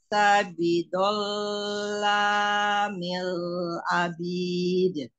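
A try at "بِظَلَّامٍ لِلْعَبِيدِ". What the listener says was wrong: Bidzallamil lil. Iya, nanti latihan ain ya. Jangan a.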